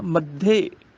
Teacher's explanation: ਮੰਮੇ ਤੇ ਜ਼ੋਰ ਲੱਗ ਜਾਏਗਾ, ਤੇ ਮੱਧੇ ਤੋਂ ਬਾਅਦ ਹਲਕਾ ਜਿਹਾ ਰੁਕਣਾ ਹੈਗਾ